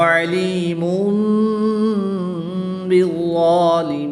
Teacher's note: دو پیش کی تنوین کے بعد حرف با ہے تو یہاں پر اقلاب ہوگا، تنوین کو میم سے بدل کر